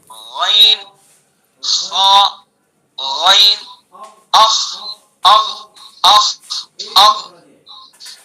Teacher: یہ بھی حلق سے ادا ہوگا لیکن حلق کا جو منہ کی طرف والا حصہ ہے وہاں سے ادا ہوگا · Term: ادنی حلق